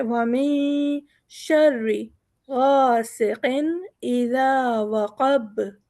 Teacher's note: با بھی ہمارا حروف قلقلہ کی طرح سے زور دے کے نکلے گا